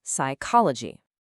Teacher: That P at the beginning, it's totally silent. It's a little gift or maybe a curse from the ancient Greek words that English borrowed. · You don't say psychology. That P at the beginning, it's totally silent.